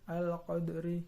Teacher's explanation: Yang ketiga yaitu qalqalah sughra, al-qadri karena ada huruf dal mati atau sukun di tengah kata. Cara membacanya harus bergerak dan berbunyi seperti memantulkan dal, al-qadri. Nomor 4 Nomor 4 yaitu khairum khairum khoi.